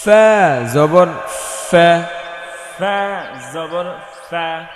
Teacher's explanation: সামনের উপরের দুই দাঁত নিচের ঠোঁটের পেটে লাগাতে হবে, বাতাস বের করতে হবে।